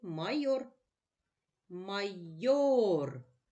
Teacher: наголошений голосний о наголос падає на другий склад